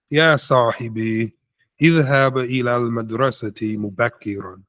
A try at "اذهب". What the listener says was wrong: طيب, be careful saying من اذهب. It's not hab. اذهب.